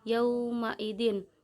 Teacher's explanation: karena ada tanda baca faho bertemu dengan huruf wawu mati, cara membacanya sekedar lunak dan lemas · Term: mat lain